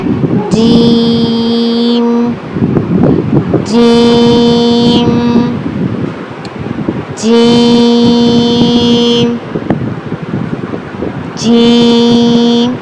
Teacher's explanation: जुबान का दरमियान वाला हिस्सा ऊपर की तरफ लगाएं। जी जी जीम जीम हलक से ह पीछे हलक पर जोर दें।